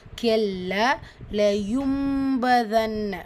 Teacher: கெல்ல லயும்பதன் நூன் சுக்குனை தொடர்ந்து letter பா இருக்குது, கூடவே குட்டியாக மீம் இருக்கா. ஸோ நூன் புரட்டி மீமாக ஓதணும். இக்லாபுடைய சட்டம்.